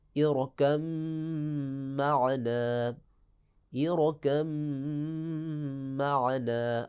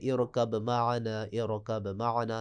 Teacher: با کو میم کی جنس میں تبدیل کر کے میم میں ادغام کر دیں گے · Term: ادغام متجانسین